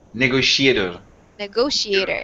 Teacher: So the syllable stress there is on that word, the syllable go.